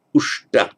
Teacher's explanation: Vasta, but by some prasarana, the lenition of the va to u becomes usta, but because the preceding vowel now is not an a, it changes the s to a sh, so you get ushta, dwelt, one who has dwelt.